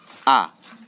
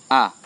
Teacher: A itu di tenggorokan yang paling bawah